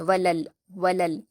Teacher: پر حرکت جلد پڑھیں گے اور یہاں پر 2 لام ہے، ایک لام کی حرکت ہے اور ایک لام پر جزم ہے تو لام کو لام سے ملائیں گے اور جلد پڑھیں گے ، ولل، ولل، حمزہ پر کھڑا زبر ہے 2 حرکات کھینچیں